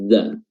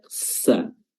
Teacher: Udara tidak keluar ketika menyebutkan huruf za, atau keluar sangat sedikit sekali, tidak seperti hams yang banyak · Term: jahar